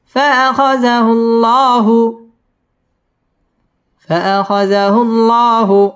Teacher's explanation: আল্লাহ শব্দের লামটা পুর হবে